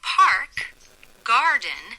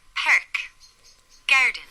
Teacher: In an American English accent, you would say park, garden, where the R sound has special emphasis in the back of the mouth and the throat. But in an Irish accent is it's as if we smile, making the vowel very broad as it comes forward to the front of the mouth. So instead of park garden, we would get perk garden per [laughter] that's the last of that video I'm going to play, but that video exists. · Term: Irish R